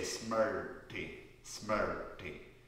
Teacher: It's a special type of vowel sound that is retroflex. So if you take your tip of your tongue to the roof of your mouth and you say R, right.